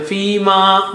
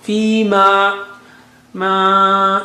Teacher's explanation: when you say ma, don't take the sound from nose.